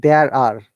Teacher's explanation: many tomatoes on the table. Now, guys, we are pronouncing R because after R there is a vowel sound, two vowel sound.